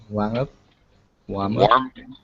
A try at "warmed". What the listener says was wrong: Warmed up. Warmed. Don't forget the D sound. Warmed.